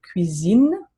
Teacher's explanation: when it's between two vowels, the S becomes a Z sound